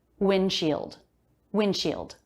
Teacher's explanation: the D comes after an N before another consonant sound. It's very common to drop that D sound, and I did.